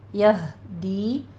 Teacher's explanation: یہدی میں ہا عکس حلق سے نکلے گا